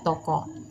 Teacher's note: bunyi O dengan ciri tengah, belakang, dan bulat pada kata toko.